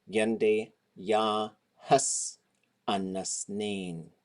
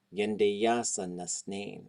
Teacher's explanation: This little s here is hus. But if hus has a vowel right before it, the word in front of it or before it ends with a vowel, it will often contract just to the letter S.